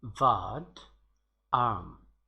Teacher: In British English, R will be omitted in pronunciation when this R comes after vowel in the word.